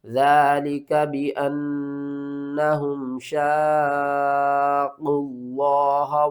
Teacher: لفظ اللہ سے پہلے پیش ہے، ہم نے لفظ اللہ کو موٹا کر کے پڑھنا ہے